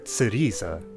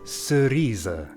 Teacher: Dissolve complex consonants. No longer [t͡s]erise but [s]erise.